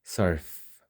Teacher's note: Nothing vibrates, right? That's a voiceless sound.